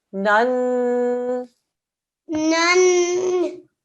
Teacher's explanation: the noon is carrying a fathatain. That means a 2-second nasal sound for the fathatain as well.